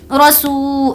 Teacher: یہاں پر ہم نے کھینچ کر پڑھا کیونکہ یہاں پر واو مدہ کا قاعدہ ہے، واو پر جزم ہے اور اس سے پہلے پیش ہے